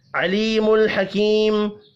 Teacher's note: 2 یا مدہ ہے، دونوں 1 الف کے برابر کھینچ کر پڑھی جائیں گی، اور وقف کی صورت میں میم ساکن پڑھیں گے۔